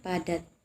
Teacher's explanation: Contohnya nada. P, bunyi yang dihasilkan di bibir atas dan bibir bawah dengan bunyi stop atau bunyi letus, atau bunyi dihasilkan dengan udara terhenti dan dilepaskan secara tiba-tiba.